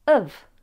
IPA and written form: əv (of)